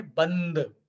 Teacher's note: तो ब के बाद आधा ना का उच्चारण होगा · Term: पंचम वर्ण का नियम